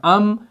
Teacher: तो हम इसको कैसे पढ़ेंगे, हमजा मीम जबर अम, नाक में से आवाज निकल रही है, नाक को पकड़ के देखें, अम वाइब्रेट हो रहा है